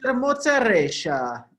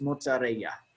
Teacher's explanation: So in Argentina, vamos a decir mozzarella. It's a very strong sh sound. But around here, it would be pronounced mozzarella.